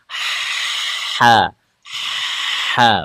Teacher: Anginnya dulu yang dikeluarkan. Sempit. Sempitkan tenggorokan tengahnya. Dipaksa keluar anginnya. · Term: huruf H-nya